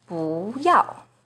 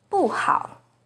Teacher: 不 is the second rising tone in 不要, but it's the fourth falling tone in 不好